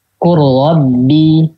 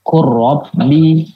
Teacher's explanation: Nah idghamnya itu idgham sempurna gitu. Jadi lamnya nggak dibaca, yang sukun langsung masuk ke lam berikutnya atau masuk ke ro. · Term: idgham kamil